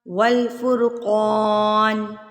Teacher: قاف موٹا حروف مستعلیہ میں سے، حروف مستعلیہ کہتے ہیں موٹے حروف کو جو ہر حال میں موٹے پڑھے جاتے ہیں، زبر زیر پیش ساکن ہے کسی بھی صورت میں وہ موٹے پڑھے جاتے ہیں۔